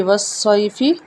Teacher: سواد کو موٹا پڑھا جائے گا کیونکہ سواد موٹے حروف میں سے ہے